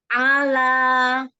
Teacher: Jadi kalau hamzah a dari bawah, ain dari atasnya ya, tengah tenggorokan. Jadi di atas hamzah makhrajnya. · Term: huruf ain